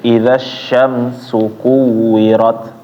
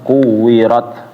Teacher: Ya, nama sifatnya adalah Hames. Jadi ketika dia berhenti ada aliran napas sedikit ya, sedikit aja.